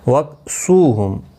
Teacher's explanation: سو واو مدہ ہے، 1 الف کی مقدار کے برابر کھینچ کر پڑھیں گے۔